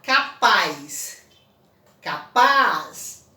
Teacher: Então, paz é a sílaba tônica.